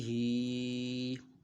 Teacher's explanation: ہا کے نیچے کھڑی زیر ہے تو اس کو ایک الف دو حرکات کے برابر کھینچ کر پڑھنا ہے